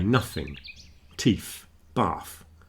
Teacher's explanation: The unvoiced one tends to sound rather like an F